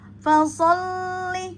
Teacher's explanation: Fasolli jangan di e ayun atau dieret ya jangan dipanjangkan karena di sini tidak ada mad dia hanya di ee nabar aja ada tasdid ya.